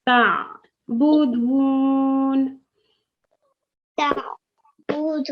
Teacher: your throat tightens at the back